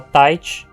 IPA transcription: taɪ̯t͡ʃ